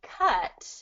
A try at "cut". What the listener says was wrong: with an a I'm hearing caught like I caught the ball